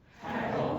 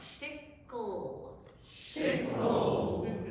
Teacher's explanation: You might be adding the tiniest schwa in there, and in Yiddish you just really try to take it out.